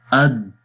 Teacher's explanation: اور یہ بھی اسی طریقے سے آپ غور سے دیکھیں، حمزہ دال زبر اد، آواز بند ہو رہی ہے، اور شدت اس کے اندر، آواز کے اندر شدت آ رہی ہے، اد سختی کے ساتھ پڑھا جاتا ہے جب یہ والی صفت اس کے اندر آتی ہے۔